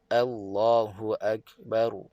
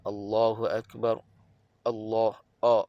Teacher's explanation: kemudian masuk kalimah Allah tebah kerana sebelumnya baris atas Allah ha pastikan A itu betul-betul nipis